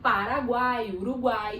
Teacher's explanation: eu tenho aí três sons vocálicos, uma vogal com duas semivogais acompanhando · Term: tritongo